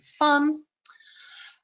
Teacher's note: It is a long, quiet sound. Place your top teeth on your bottom lip to say it. Do not use your voice. So if you put your hand right now on your throat and make the sound, and then make the v sound, you should be able to feel the difference in the vibrations of your voice.